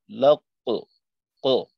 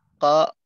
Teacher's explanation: কলকলা হরফের ভিতর দুইটা হইলো মোটা হরফ, কফ এবং ত। এই দুইটার কলকলা হলো ঊর্ধ্বমুখী